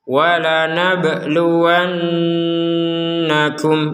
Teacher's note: Nun bertasydid ini maka kita harus mendengungkannya.